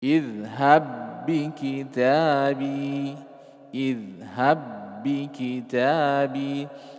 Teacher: Nah, yang asalnya ada qalqalah tidak berfungsi qalqalahnya. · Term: idgham shaghir